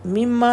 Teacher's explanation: میم شدد ہے، 2 حرکت کا غنہ ہے، میم شدد کی وجہ سے ریڈ کلر ہے۔